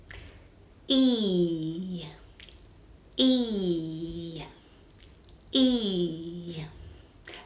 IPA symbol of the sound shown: i: